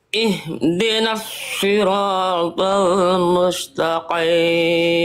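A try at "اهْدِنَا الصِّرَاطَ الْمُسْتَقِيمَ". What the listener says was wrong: Huruf shadnya tinggal ditebalkan lagi sli, angkat lagi pangkal lidahnya. Coba ihdinas sli, coba.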